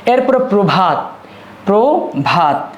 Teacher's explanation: এখানে আদ্য অয়ের সাথে রফলা যুক্ত আছে বলেই এই আদ্য অয়ের উচ্চারণটা হবে উকারান্ত বা উবত।